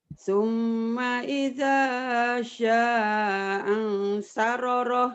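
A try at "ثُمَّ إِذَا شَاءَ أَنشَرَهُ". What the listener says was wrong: Hanya 2. Angsaroroh. Angsaroh. Rohnya 1. Angsaroroh. Angsaroh. hanya 2.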